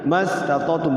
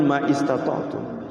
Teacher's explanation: Hamzah wasal itu hamzahnya enggak berbunyi ketika disambung, ketika diwasal.